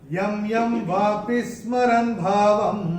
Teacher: ये जो य, दोनों य के ऊपर जो अनुस्वार आ रहा है, पहले य के बाद का अक्षर है य, और अनुस्वार के बाद जब य आएगा तो अनुस्वार का उच्चारण होगा म